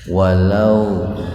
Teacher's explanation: wau sukun didahului fathah jadi agak dibaca panjang gitu Pak ya walaupun karena ini adanya di tengah-tengah kata atau kalimat tidak sepanjang ketika jatuh di akhir kalimat atau tidak sepanjang ketika jatuh pada wakaf. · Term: mad lain